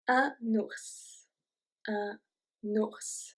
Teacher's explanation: It's also one of the only words where we pronounce the S at the end.